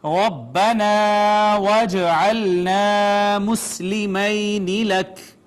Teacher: جیم حروف کلکلہ میں سے آ گئی ساکن لہٰذا اس پہ ہوگا کلکلہ · را چونکہ مفتوح ہے اس وجہ سے پر پڑھی جائے گی، مفخم پڑھی جائے گی ، با مشدد ہے زور سے اس پہ پڑھیں گے، الف